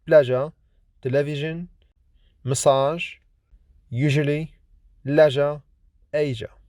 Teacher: voiced, lenis, palato-alveolar, fricative consonant